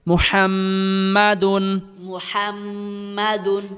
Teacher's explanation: মুহাম মিম জবর মা মুহাম্মা দাল দুই পেশ দুন মুহাম্মাদুন মুহাম্মাদুন এই শব্দগুলোর মধ্যে মিমের উপর তাজদিদ থাকার কারণে আমরা গুন্নাহ করে পড়তেছি